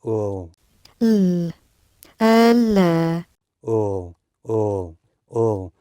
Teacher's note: 혀를 편안히 있다가 을 소리를 내세요. 을. 하면서 치경에다가 혀 끝을 붙이시면 됩니다. L, L, 확실하게 붙이시면 돼요. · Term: L 발음